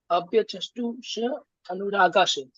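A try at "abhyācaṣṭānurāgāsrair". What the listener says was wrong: No, you have to say it together. Abhya Chashtanuraga Sher. Abhya Chashta. Abhya Chashta. Abhya Chashtanuraga Sher.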